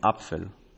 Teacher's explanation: in other positions the p became an affricate pf